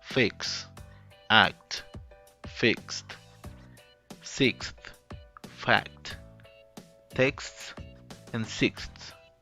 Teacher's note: after K sound, all other consonants in final clusters are also voiceless